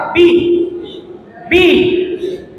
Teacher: just দুইটা ঠোঁট একসাথে হবে, জাস্ট কুইকলি ছেড়ে দিবা,